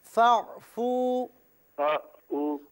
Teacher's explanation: فا کو موٹا نہ پڑھیں